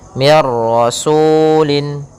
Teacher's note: gunah Idam bilunah yaitu adanya nun sukun bertemu dengan ro maka suara nunnya langsung hilang langsung kepada huruf ra dan jelas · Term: idgham bila gunah, idgham bila gunnah